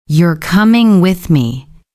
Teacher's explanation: The tone goes down at the end.